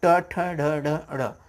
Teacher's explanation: जब आप बोलते हैं तो जीभ आपका मुड़ जाता है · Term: मूर्धा वाले वर्ड